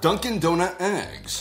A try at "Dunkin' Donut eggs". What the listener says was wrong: That did not sound like you said eggs. That sounded like eh.